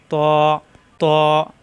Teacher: জিহ্বা উপরের দাঁতের গোড়ায় লাগবে